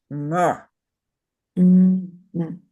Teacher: In the first N, your tongue is guttural, so it's folded in half and jammed in the throat. So it's "nr." Say "nr" with as far back as you can.